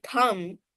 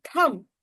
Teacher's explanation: The pronunciation of the word t h u mb thumb is only thumb. The b at the end doesn't have any sound though it exists. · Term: silent letters